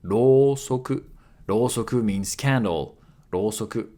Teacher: /u/ after /o/ makes it a long vowel